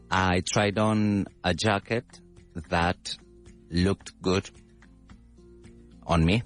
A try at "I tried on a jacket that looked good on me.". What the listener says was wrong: Perfect. That's it.